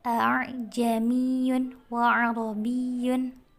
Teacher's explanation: Pengertian tahsil adalah membaca antara hamzah dan alif. Hamzah pertama dibaca tahqiq jelas dan pendek, sedangkan hamzah kedua dibaca tashil